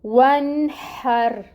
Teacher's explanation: اس واو کو اس نون ساکن کے ساتھ ملائیں گے، 1۔ آگے حروف حلقی میں سے ہا آ رہا ہے، اس وجہ سے یہاں پہ ہم اس کو ظاہر کریں گے اور اخفا نہیں ہوگا یہاں پہ نون ساکن پہ۔ نون ساکن کو ظاہر کر کے پڑھیں گے، ہا کی ہمس لے کے آئیں اور رو کو ساکن کر رہے ہیں، اس کو پر پڑھا جائے گا، اور نون پہ اظہار ہو رہا ہے۔